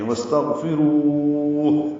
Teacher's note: وقفاً ہا ساکن پہ ہمس کر رہے ہیں، واستغفروہ، اور یہ مد عارض سکون بن رہی ہے۔